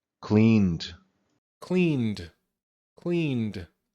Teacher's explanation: I know because of the N, we're going to use a D sound.